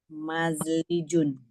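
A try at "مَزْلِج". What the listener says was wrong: betul mazlijun.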